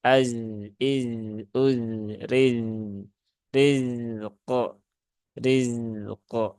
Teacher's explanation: Maka ini juga bukan rizq ya, tapi dia harus ditunaikan dulu sifat rokhwah dari huruf zai